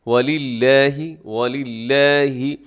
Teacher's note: وَلِلَّهِ، لفظ اللہ کو باریک پڑھیے گا کیونکہ یہ لفظ اللہ کے لام سے پہلے لام کے نیچے زیر ہے